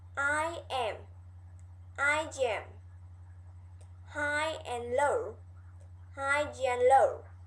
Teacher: If our lips are white at the ends of the first word, we insert a j sound.